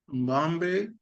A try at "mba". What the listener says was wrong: Now you see you bring M, Mba, Mbe, Mb. M should not be pronounced. It should come out as Mba, Mba instead of. it's Mba,